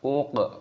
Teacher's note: La uq di sini qafnya berharokat sukun, kita baca mati dan kita pantulkan suaranya, kita qalqalah dibaca uq.